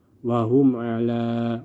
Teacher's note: Mim sukun bertemu semua huruf selain huruf ba dan mim, dan di sini mim sukun bertemu dengan ain, maka dibaca jelas tanpa dengung. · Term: izhar syafawi